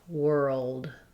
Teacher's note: both my ul and my d touch further back on the roof of my mouth than they normally would